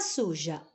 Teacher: Que sempre a penúltima sílaba de todas tem a tonicidade, são tônicas. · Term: sílaba tônica penúltima